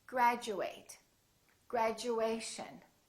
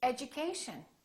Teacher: Instead of saying chew, it sounds like we're saying Jew.